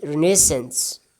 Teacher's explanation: It can be pronounced we can pronounce it using different pronunciations, but here I have mentioned British pronunciation as well as American pronunciation. In British, second syllable is stressed